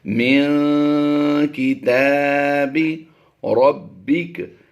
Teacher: یہاں پر نون ساکن کے بعد کاف حروف اخفا میں سے ہے تو یہاں پر اخفا کرتے ہوئے ہم آواز دیں گے